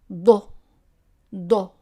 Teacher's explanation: it's like a d but pronounce in the back of the mouth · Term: dodd